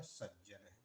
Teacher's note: ता के स्थान पर इसके स्थान पर द होना चाहिए। लेकिन चूंकि बाद में जो ज आया हुआ है। इसका स्थान तालु है तो यहां भी ज हो जाएगा तो बनेगा सज्ज।